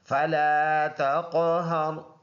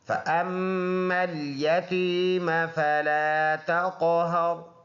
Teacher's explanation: میم مشدد ہے تو اس میں پکا غنہ ہوگا، یعنی ایک الف کے اندازے سے اس میں ناک میں آواز لے کے جائیں گے